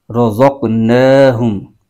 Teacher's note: رزق قوف قلقلہ والا حرف ہے، یہاں قلقلہ ہوگا، رزق، اور نون پر کھڑا زبر ہے ایک الف کھینچیں گے